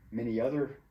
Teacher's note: the vowel y at the end of the word produces the consonant y when it's next to a word that starts with a vowel